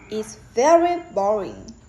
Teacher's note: very gets more stressed than boring because the speaker wants to emphasize his her feeling.